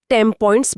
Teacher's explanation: यहां एन बदलकर एम जैसा हो जाता है क्योंकि पी और एम दोनों होठों से बोली जाने वाली ध्वनियां हैं। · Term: एसिमिलेशन